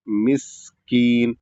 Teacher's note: جہاں پر سین ساکن ہے تو سیٹی کے ساتھ ادا ہوگا مسکین، اور چھوٹا کاف ہے تو چھوٹا کاف ادا کریں گے،